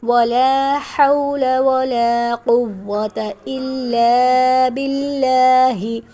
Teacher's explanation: باللہ باریک پڑھیں گے کیونکہ اس سے پہلے زیر ہے